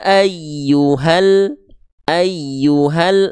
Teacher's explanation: jangan sampai dipanjangkan ya ayyuhal enggak tapi hal langsung karena berjumpa dengan alif lam qamariyah · Nah, apabila teman-teman mendapati ada kondisi mad tabi'i yang berjumpa dengan ALQ ini, nih ada bentuk seperti alif dan lam yang dia di atasnya ada sukun, itu namanya alif lam komariyah. Maka mad tabi'inya gagal aktif, cukup dibaca 1 harokat ya. Jadi dari ha ini ya ayyuha langsung masuk ke al, langsung masuk ke tanda komariyahnya, tanda sukunnya ya.